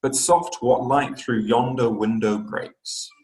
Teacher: it is a pair of syllables the first one is unstressed the second stress